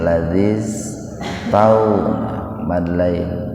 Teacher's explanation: Cuma dikarenakan setelah iya-nya itu huruf mati, huruf sukun yaitu sin, maka iya-nya enggak dibaca panjang. Ladzis, nah itu ladzis, jadi diabaikan huruf iya-nya pak, langsung masuk ke sin.